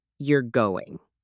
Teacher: with a falling tone that's a statement. Same words, totally different meaning.